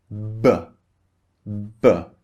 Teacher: closed and then opened this is how we make the sound first the lips are closed and then we release the air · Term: voiced B